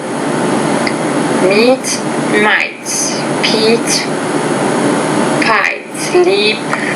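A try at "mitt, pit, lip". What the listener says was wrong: Now you're having some trouble here. It's meet, mit, Pete, pit, leap, lip. Work on pronouncing those two minimal pairs, those E and I.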